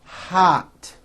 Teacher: there are words in English that are spelled with an O but are pronounced as ah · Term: ah sound